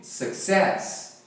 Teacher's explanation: A galera fala success, a primeira sílaba enfatizada, mas não é, é a segunda. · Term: stressed syllable